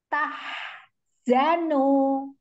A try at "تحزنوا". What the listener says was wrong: Iya, bagus ada alirannya, tetapi jangan diputus. تحزنوا. Iya, jadi harfnya walaupun mengalir tidak diputus dengan huruf Z-nya.